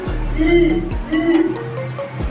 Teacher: Pagilid na may tinig.